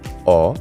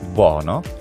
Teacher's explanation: we have the rounded version which is o like Italian bono